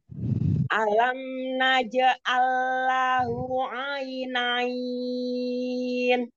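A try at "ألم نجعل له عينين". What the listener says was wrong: Disempurnakan mat silah sugroknya dua harokat. Alam naj'allahu lahu ainain.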